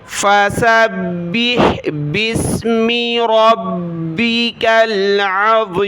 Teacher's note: सीन को बा के साथ, बा को हा के साथ मिलाया, बा को सख्त किया, हा को गले से निकाले, यहाँ बा को सीन के साथ मिलाया, बा सीन ज़ेर बिस।